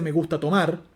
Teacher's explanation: el acento nuclear de esa oración cae sobre tomar